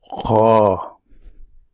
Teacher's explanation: You need to pronounce this letter from the right bottom of your throat.